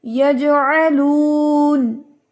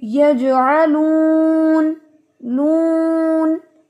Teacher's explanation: वहां पर आपने वक्फ करना हो तो खास तौर पे ख्याल रखना है कि आवाज नाक में नहीं जानी चाहिए